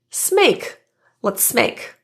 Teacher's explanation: The S in let's, which is a contraction of let and us, links to the word make to enhance fluency. This makes it sound more like smake.